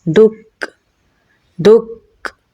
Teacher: کاف میں صفت شدت اور حمز دونوں پائی جاتی ہیں۔ پہلے صفت شدت ادا ہوگی اور پھر صفت حمز۔ صفت شدت میں ہم سختی سے پڑھیں گے دک، اور صفت حمز میں سانس جاری ہوگا تو پڑھا جائے گا دک دک۔